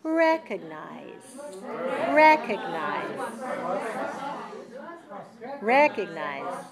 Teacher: The first syllable is higher and longer than the other. And it's the eh sound, the clear eh sound. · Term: stressed